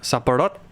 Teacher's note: So the rot is prominent, but the สับปะ in the beginning, the สับปะ, they're really kind of like just kind of passing syllables. You don't want to give them too much stress. · you need to speed it up and just emphasize the last syllable